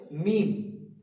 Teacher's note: দুটো ঠোট একসঙ্গে মিলিত হয়ে উচ্চারিত হবে মিম